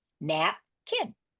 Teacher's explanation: napkin is a VC CV with the accent on the first syllable